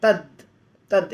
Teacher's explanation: तत का आधा त द बन जाता है